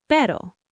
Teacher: one R in the middle of a word is soft. It's a light tap of the tongue